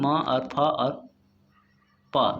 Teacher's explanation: म और फ और प ये तीनों क्या है, होंठ से चिपकते हुए रहते हैं, इसलिए इसको होठस्य ध्वनि भी कहते हैं।